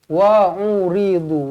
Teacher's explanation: Wa'uridu, wa'uri pendek, du baru panjang. Wa'uridu, jangan wa'uridu ataupun wa'uridu. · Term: panjang pendek